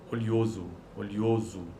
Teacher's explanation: Ou com um ditongo crescente ocorrendo em posição pretônica. · No último caso, oleoso, temos uma sequência de semivogal e vogal.